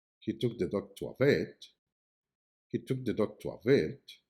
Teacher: the word vet carries the main emphasis as it is the most important information in the message